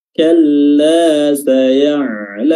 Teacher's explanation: kalla di sini lam tasdid, ya, tasdid biasa saja tanpa ditahan durasinya